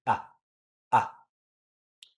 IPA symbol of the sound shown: ʌ